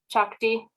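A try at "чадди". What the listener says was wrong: You're saying it's soft. It sounds like a D. Chadi. Yeah, chadi.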